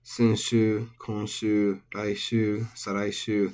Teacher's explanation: Senshu, konshu, raishu, saraishu, there are no accents here. These have long syllables, but don't mistake that for accents. These are all flat.